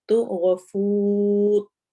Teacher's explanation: آخر میں روا کو ہم نے موٹا کر کے پڑھنا ہے